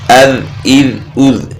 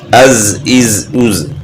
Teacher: اس کے بعد ذیل اور زا، ذا نرم اور بغیر سیٹی والی آواز، زا سیٹی والی آواز۔